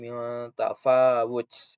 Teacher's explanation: Nah, pada huruf fa itu pada huruf fa itu terdapat mat tabi'i karena ada huruf fa yang berharokat fathah tegak atau berdiri. Jadi dibaca panjang 2 harokat.